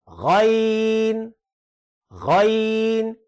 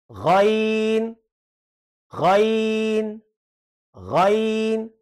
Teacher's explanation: बिल्कुल हलक के ऊपर से अदा होगा, जहां पे हलक जो है मुकम्मल हो रहा है, हलक का इख्तिताम हो रहा है, वहां पे ये गैन का मखरज, गैन का मखरज जो है वो ये वहां पे है।